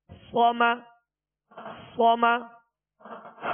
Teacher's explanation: صاد کو پر پڑھیں گے اور اس میں سیٹی کی آواز پیدا ہوگی